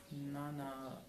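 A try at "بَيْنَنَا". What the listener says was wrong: بیننا. نان میں اگلا نون مت آنے دیں.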